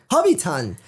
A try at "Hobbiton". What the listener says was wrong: Still sounds like you're saying Hobby Town now. Hobbiton.